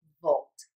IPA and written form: voʊlt (VOLT)